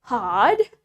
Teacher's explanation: in British we don't pronounce the r sounds clearly